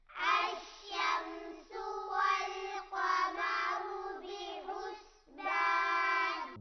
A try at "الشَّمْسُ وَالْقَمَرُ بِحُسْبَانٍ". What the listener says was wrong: بحسبان پڑھیں گے، بے حسبان نہیں پڑھیں گے۔ الشمس والقمر بحسبان۔